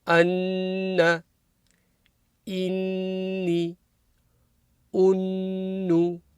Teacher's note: So Mim Mushaddada Ghunnah, like I mentioned at the start. This will be a nasal sound. So from the nose the sound comes for 1 or 2 seconds.